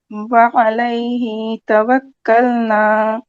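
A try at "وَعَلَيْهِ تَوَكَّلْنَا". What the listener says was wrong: ہاں ہی پہ ٹائم نہ لگائے کیونکہ ہی کے بعد مد اصلی نہیں ہے، فوراً توکلنا پہ جانا ہے. وعلیہ توکلنا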